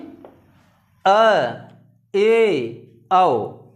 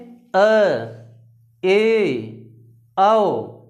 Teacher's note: अर्ध विवृत्त में क्या होता है कि इसमें मुख आधा खुला रहता है, इसमें स्वर के उच्चारण में मुख आधा खुला रहता है